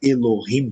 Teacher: a semivogal ela é muito breve, né, de modo que ela não marca uma sílaba. A palavra Elohim, por exemplo, a primeira, né, vogal que aparece, na verdade, é semivogal.